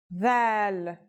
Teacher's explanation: This letter's pronunciation is a voiced sound the, as in this or that. It's pronounced with the tongue between the upper and the lower teeth.